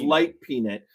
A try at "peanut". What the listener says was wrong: How are you saying that? It's not a nit. It's not a peanut. It's a peanut. it is an actual nut.